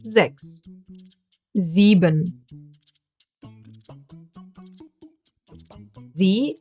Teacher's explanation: S at the beginning of a word, pronounced as a Z. The diphthong I, E, pronounced like a long, slow E.